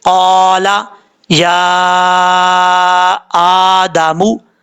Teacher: قاف الف زبر قا، لام زبر لا، قالا، یا کھڑا زبر یا، حمزہ کھڑا زبر آ، یا آ، دال زبر دا، میم پیش مو، یا آدمو۔ یا کے اوپر مد منفصل ہے، مد منفصل کی مقدار 2.5 الف کے برابر ہے۔